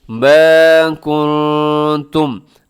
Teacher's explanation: نون ساکن کے بعد تا ہے تو یہاں اخفا کیجیے گا، آواز کو ناک میں چھپائیے گا